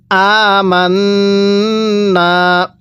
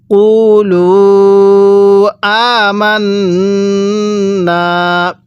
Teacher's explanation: মিমকে নুনের সাথে লাগিয়ে গুন্নাহ করার পরে নুনের মধ্যে টান দিতে হবে